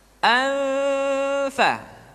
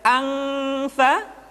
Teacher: Kemudian yang kedua dimasukkan ke hidung suaranya, dan yang ketiga nun mati tanwin ketika digunakan posisi makhraj sudah berada pada huruf fa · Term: ikhfa